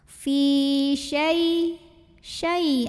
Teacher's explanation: Fi syai ada huruf lin atau harfulin. Karena ya sukun sebelumnya baris fathah, maka dibacanya dilembutkan